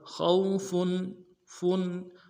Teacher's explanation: فا کے اوپر تنوین ہے، یہاں پہ اظہار ہوگا